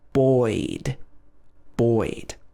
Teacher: So here we're pronouncing the sound oi, o plus I, o I, buoyed, buoyed.